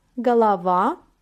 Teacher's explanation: İsimlerde de aynı durum ortaya çıkmakta örneğimiz bakalım galava baş kafa galava vurgu son A harfine düşüyor